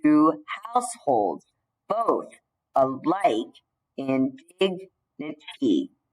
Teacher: it has to go unstressed, stressed, unstressed, stressed, unstressed, stressed, unstressed, stressed, unstressed, stressed. So it's 10 syllables, and when you divide it into 5 feet, the unstressed stress pattern repeats all the way until the end of the line. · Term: iambic pentameter